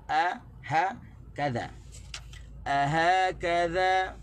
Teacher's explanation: Di a tu tak boleh tekan di ha dan tekan di kaf.